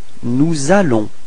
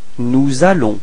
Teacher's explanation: notice the liaison between S and A